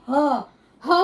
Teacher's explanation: ह और आ शब्द जो है इसका उच्चारण स्थान जो है ये हमारा स्वर तंत्र होता है स्वर तंत्र के माध्यम से ये दोनों शब्दों का उच्चारण हम